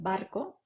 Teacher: la B, oclusivo bilabial sonoro, como en barco